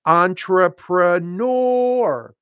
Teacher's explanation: it is an English word and we stress the final syllable